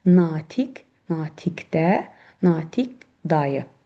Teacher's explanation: Bu zaman natiq sözü ayrılıqda olanda, özündən sonra samitlə şəkilçi gələndə, özündən sonra samitlə başlayan söz gələrsə, bu zaman q, k kimi tələffüz olunur.